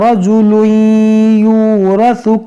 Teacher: تنوین کے بعد یا ہے، یہاں پر ادغام کریں گے ، را کو موٹا کریں گے، اور یہ ثا ہے، اس